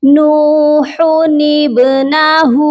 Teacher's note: با ساکن ہے اور یہ حروف قلقلہ ہے۔ جب یہ حروف قلقلہ ساکن ہوتے ہیں تو قلقلہ کرتے ہیں